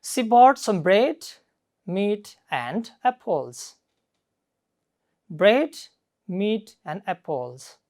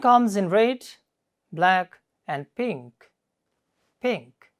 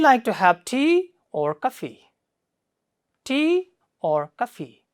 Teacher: first Rises and then Falls it normally is used with list of items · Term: Rising falling ination